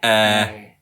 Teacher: So it's, it's quite a low ɛ. Yeah. A kind of nearing to ash.